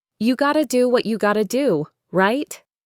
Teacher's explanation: Notice the rising intonation on right, which makes it a question and invites the listener to agree with me.